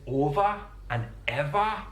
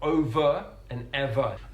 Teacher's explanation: it one really distinctive feature of this accent is on the words that end in ER and O they are pronounced with an a sound not an uh sound